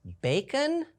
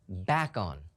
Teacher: we have that open syllable with a long a